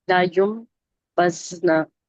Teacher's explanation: इसमें मीम की आवाज निकालेंगे, नून साकिन की बजाय